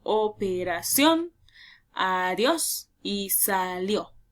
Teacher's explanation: llevan la mayor entonación de voz en la última sílaba. Por lo tanto, estas palabras siempre van a llevar el acento, ya sea prosódico o ortográfico, al final de la palabra. · Palabras que si yo separo en sílabas, la última lleva la mayor entonación de voz, por lo tanto es aguda. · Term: palabra aguda